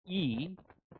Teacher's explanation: sound E is front high unrounded